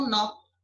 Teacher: Em nó, o acento, a vogal é aberta, o acento é agudo.